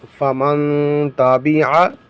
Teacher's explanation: یہاں پر اخفا کریں گے، کیوں؟ اس لیے کہ نون ساکن کے بعد حروف اخفا میں سے تا آیا ہے تو اخفا کیا جائے گا، یعنی غنہ کر کے پڑھیں گے